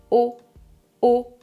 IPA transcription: o